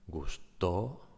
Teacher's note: In the second case, gustó, to is the strong syllable, the stressed syllable in this case